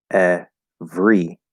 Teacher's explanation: For example, instead of saying every, we just pronounce it every, because the R consonant is shorter and faster than the vowel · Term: vowel to R consonant shift